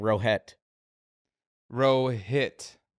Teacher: you're putting an emphasis on the T and you're hitting it